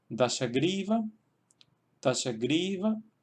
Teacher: tenemos la sílaba gri, que tiene una sílaba larga y por tanto se queda ahí el acento